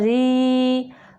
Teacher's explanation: یہ جو یہ را کے نیچے زیر ہے تو اس را کو باریک پڑھیں گے